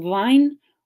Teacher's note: There's also a struggle with the W sound, the W sound. Ukrainian lacks the appropriate W, so learners substitute it with V instead.